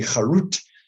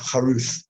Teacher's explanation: For most dialects of Jewish history and for original Hebrew, it would be the difference between, say, a T and a TH. With a tet would be charut, and with a unvocalized taf, charuth, or something like that.